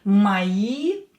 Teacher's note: And now with мои, O will be pronounced as A because it's not stressed.